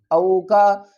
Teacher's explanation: واو ساکن سے پہلے زبر ہے تو اس کو ہم جلدی سے ادا کریں گے، حروف لین ہے اور نرمی سے بھی